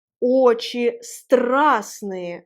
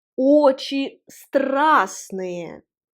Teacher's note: La consonne T ne se prononce pas.